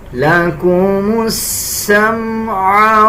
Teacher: وَجَعَلَ لَكُمُ السَّمْعَ اس میم کو دیکھیں، اکثر لوگ اس کو پڑھتے ہوئے غنہ کر دیتے ہیں، اس میم پہ غنہ نہیں کرنا